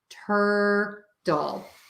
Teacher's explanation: you're going to make that T as a D sound, a super fast D sound, which is technically the flap T.